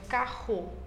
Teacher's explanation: O último fonema que é adquirido é o R velar, que é o de carro